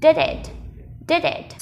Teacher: Nối âm nhá, âm d với it, mình sẽ nối thành did it